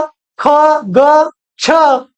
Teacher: ज्या वर्णाचा उच्चार ह युक्त होतो अशा वर्णाना आपण काय म्हणतो महाप्राण